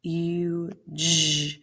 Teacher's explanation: It's a long U. It's a one syllable word, but that U is long.